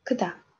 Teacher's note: Biz undan oldin k harfini o'tdik, lekin bu qattiq k, ya'ni k bilan h ni birga talaffuz qilgandagi k. Oddiy k'imizdan farqi yozilishida xuddi shu ko'rinishda yoziladi va aytilishda qattiqroq kh, ya'ni k qattiqroq aytamiz.